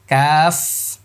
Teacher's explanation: শেষে ফা আছে, বাতাস হবে।